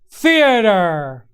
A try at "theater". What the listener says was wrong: Now, see, that's a slightly different pronunciation. I always think of it as very British. It's got to be theater with the R, and it's more like masterpiece theater.